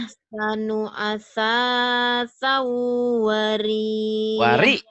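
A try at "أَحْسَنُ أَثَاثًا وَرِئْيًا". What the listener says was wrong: Wari. Ya, ditekan itu mah ada hamzah mati. Bukan waria, kalau waria mah bencong. Wari, iya ya.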